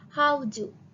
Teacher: For example, how do. How is unstressed syllables and do is stressed syllables.